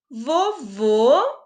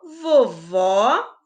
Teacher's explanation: tem uma diferença um sons é mais fechado e o outro sai mais aberto de acordo com acento